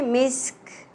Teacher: ख़ुतामुहु मिस्क, मीम सेन ज़ेर मिस और then काफ साकिन हो जाएगा वक्फ की सूरत में